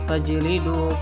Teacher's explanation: Hukum tajwid dari ayat tadi, lafal fajlidu, hukum tajwidnya adalah qalqalah sugra karena ada jim mati, dibaca dipantulkan sedikit